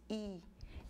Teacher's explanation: isso quer dizer que é uma vogal sem arredondamento não arredondado então i é uma vogal alta anterior não arredondado · quando você pronuncia I os seus lábios estão estendidos I Então isso quer dizer que é uma vogal sem arredondamento